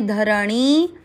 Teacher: णी की मात्रा बड़ी लंबा खींचेंगे